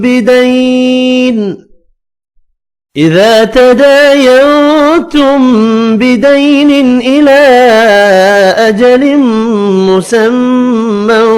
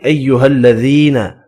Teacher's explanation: یا مدہ ہے، اس کو 1 الف کی مقدار میں کھینچ کر پڑھنا ہے